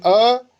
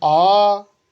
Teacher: जितना समय आपको अ बोलने में लग रहा है उतना समय आ बोलने में थोड़ी लगेगा, उससे ज़्यादा लगेगा